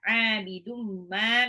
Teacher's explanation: Abidum, ainnya 2 harokat, tanwin ketemu mim itu adalah idgham bil ghunna